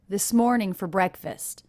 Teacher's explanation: Also, I noticed the rhythm here. Morn and breck are the two stressed syllables.